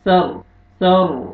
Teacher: را کو اپنے پر کرنا ہے، را ساکن اس سے پہلے زبر ہے